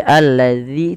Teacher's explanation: Hati-hati jangan menebalkan zanya jangan alladzi tapi alladzi tipis